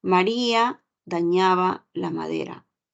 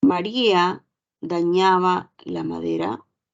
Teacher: afirmación en cambio Si la oración fuese María dañaba la madera el tono sube ahí tenemos una pregunta · aquí yo veo que los tonos iniciales van tomando forma, pero el último segmento baja.